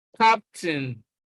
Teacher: Nouns, captain. You can see that stress is on the first syllable